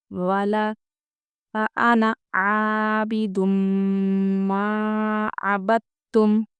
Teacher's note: انا ہم جلدی پڑھیں گے، عین کھینچیں گے۔ دم دیکھیے تنوین کے بعد یرملون میں سے میم ہے، اسے غنہ کر کے پڑھیں گے۔